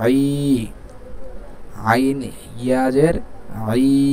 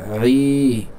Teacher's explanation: একটু গলার ভিতর থেকে আই, ই এমন যেমন হামজার মতো না হয়ে যায়